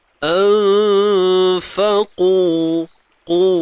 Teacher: Kena tebal dan dibaca 2 harakat. Huruf qaf huruf isti'la kan, terangkatnya pangkal lidah.